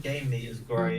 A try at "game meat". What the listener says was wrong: Make sure to pronounce the M at the end of game. I don't hear the M for some reason. I was like, where's the M? I'm missing the M.